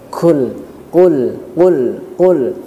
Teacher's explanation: posisi pangkal lidah ya pangkal lidah diangkat ke langit-langit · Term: huruf qaf